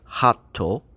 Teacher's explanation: word hato we would write that ha small tsu and to and again that small tsu represents a short pause basically we have one beat for ha a one beat pause · and to and again that small tsu represents a short pause basically we have one beat for ha a one beat pause for that small tsu and then a one beat for toe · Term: glottal stop